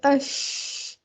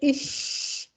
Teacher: पहले हम मुंह के अंदर शीन को फैलाएंगे, तफशी की सिफ्त पैदा करते हैं और उसके बाद शीन को अदा करते हैं।